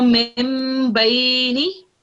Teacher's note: you will pronounce the meme instead of the noon